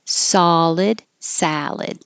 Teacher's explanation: the ID and the ad at the end sound exactly the same